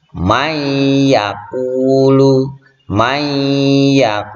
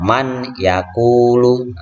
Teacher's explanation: Suara non matinya ini dilebur, dimasukkan ke huruf berikutnya.